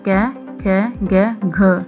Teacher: तो कै वर्ग का उच्चारण स्थान होता है कंठ।